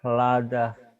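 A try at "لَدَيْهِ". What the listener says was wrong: Tapi Bapak mau dimonyongin. Biasa jangan dimonyongin mulutnya Pak. Mulutnya dibuka lebar. Ladahu.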